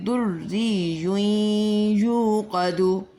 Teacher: را جو ہے وہ یا کے ساتھ ملے گی، یا کے اوپر تنوین، تنوین کے بعد جو ہے دوسرا جو یا ہے اس کے اوپر بھی مشدد مطلب تشدید ہے، اور یہ یا دوسرے یا کے ساتھ ملے گا۔ تنوین کے بعد یا مشدد مطلب یہاں پر انکمپلیٹ ادغام ہوگا